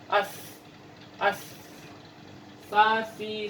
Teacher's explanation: cara penyebutannya kita seperti mau menyebutkan huruf sin atau sa, tapi ujung lidah bertemu dengan bagian dalam gigi ya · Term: huruf sa